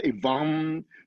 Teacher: the M in Pali is pronounced nasalized. So Evam, so there's a hum in the back of your throat.